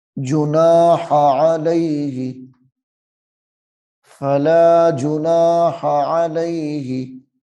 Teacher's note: جب اکٹھا پڑھنا ہے تو جناح کی الف کو لمبا نہیں کرنا